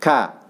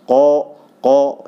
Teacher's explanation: Ketika dia pangkal lidah membentur daripada yang keras, itu pasti akan ada udara di situ ya. Seperti ka ada udara. Tapi kalau qa ya, jadi itu tidak keluar udara ya. Itu jahar. Dan ka ini adalah hamas ya.